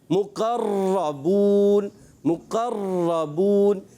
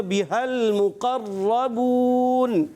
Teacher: ہم نے ایک را پڑھنی ہے, تکرار اصلی نہیں ہونی چاہیے, یعنی اس کی ادائیگی میں نوک زبان میں کپ کپاہٹ ہوتی ہے جو ہمیں خود کو پتہ چلے گی, سامنے والے کو اس کا زیادہ پتہ نہیں چلنا چاہیے.